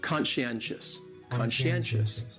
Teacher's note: conscientious has 4 syllables, and the stress is on that third syllable, that N, conscientious.